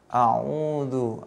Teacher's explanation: Di sini adalah mad tabi'i, panjangnya 2 harakat.